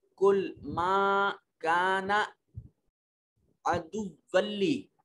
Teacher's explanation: तनवीन को जब लाम और रा से मिलाते हैं तो नून की आवाज नहीं आती